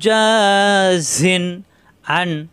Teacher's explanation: তানবিনের পরে আসছে আইন স্পষ্ট হবে গুন্না হবে না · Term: স্পষ্ট ইজহার